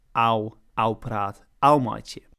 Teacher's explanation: Klaaifrysk and Zuidwesthoeks also share in part a variant pronunciation of the letter cluster OF, which instead of being a long O becomes a diphthong or a new sound entirely, ow